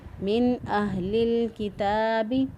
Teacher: من اہل الکتاب، نون ساکن کے بعد جب حروف حلقی میں سے کوئی حرف آ جائے تو وہاں پر اظہار ہوتا ہے، یہاں پر نون ساکن کے بعد حمزہ آ گیا، اظہار کیا، نون کی آواز کو ہم نے ظاہر کر کے پڑھا